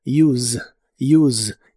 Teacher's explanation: La pronunciación normalmente termina con el sonido vibrante de la s, que es como se suele pronunciar la Z en inglés